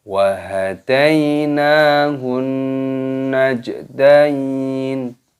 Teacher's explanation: Hun, alif lam syamsiyah, nunnya berharokat tasdid, ini didengungkan.